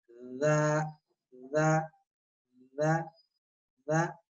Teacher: दाल में देखें कि जबान की जो नोक है सनाए उलिया का जो अंदरूनी किनारा है, जहाँ दांत खत्म होते हैं किनारा दांतों का, वहां लगेगी। दा, दा, दा, दा, तब नरम होगी।